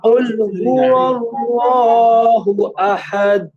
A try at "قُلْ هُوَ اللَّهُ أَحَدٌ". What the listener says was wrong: কুল হুয়াল্লাহ, এইভাবে যদি একটু টান দিয়ে যান তখন এটা এক আলিফের জায়গায় দুই আলিফ হয়ে যায়। এখানে এক আলিফ আছে, এক আলিফের বেশি যাবে না, এক আলিফের বেশি গেলে কিন্তু এটা অর্থের চেঞ্জ হয়ে যায়। এটা খুবই মারাত্মক একটা বিষয়, এটা মাপে রাখতে হবে, স্কিলে রাখতে হবে। কুল হুয়াল্লাহু আহাদ, এক আলিফের উপরে যেন বেশি না যায়।